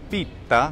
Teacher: Now, that seems to suggest that the Greek word pita, with only the one tau, tav, actually comes from an Italian word, pitta, because it has that geminated double T